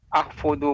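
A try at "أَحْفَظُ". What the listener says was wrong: Ahfadhu ba'daha. Ahfadhu. Nah, dengan fathah pada harful fa.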